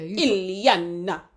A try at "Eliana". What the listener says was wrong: I'm not Italian, but you give it 2 syllables. It's just one word.